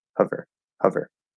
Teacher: you're doing the schwa, but you're adding a little bit of the lips for oo and o or ow, just a little bit